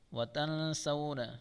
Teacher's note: نون ساکن کے بعد سین اخفا کا گنہ کے ساتھ پڑھیں گے